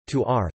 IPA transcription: toːr